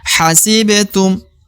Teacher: Ba yang berada di tengah lagi ya Ba sukun atau ba mati maka harus diqalqalahkan · ba sukun atau ba mati, maka harus dikolkolahkan atau dipantulkan ya.